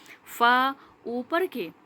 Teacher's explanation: اوپر کے دانتوں کے کنارے جب نیچے کے ہونٹوں کے تری والے حصے سے لگ رہے ہیں تو فا ادا ہو رہا ہے